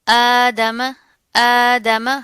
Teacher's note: हमजा के ऊपर क्या, खड़ा ज़बर आ रहा है, तो एक अलिफ के बराबर इसको पढ़ेंगे